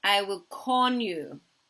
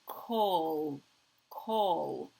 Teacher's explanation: his final L he replaces with an N